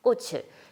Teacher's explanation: 치읓 받침이 그대로 뒤에 모음인 으 쪽으로 넘어가서, 즉 연음되어서 그대로 읽어주면 됩니다